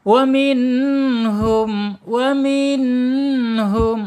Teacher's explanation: Nun jangan sampai jangan sampai mantul. Karena nun ini bukan bukan huruf qalqalah ya.